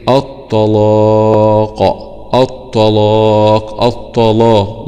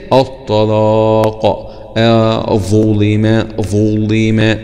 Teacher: يبقى كلمة الطلاق هنغلظ اللام دي